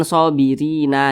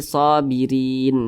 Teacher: Jadi kita baca sobirin, jangan sobirina, jangan, tapi sobirin seperti itu. Huruf nun kita sukunkan sebab kita berhenti atau berwakaf di huruf nun, dan huruf nun tidak dibaca panjang.